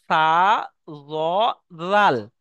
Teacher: জিভের আগা এবং সামনের উপরে দুই দাঁতের আগা এই দুই দাঁতের আগা এবং জীবের আগা লাগিয়ে উচ্চারণ হয়